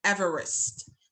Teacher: there is a schwa between the V, the va sound, and the r sound.